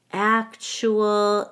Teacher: in actual I stress the first syllable and then the TU makes a CH sound we connect the u to the a with a w actual · we connect the u to the a with a w actual the AL is just a schwa plus l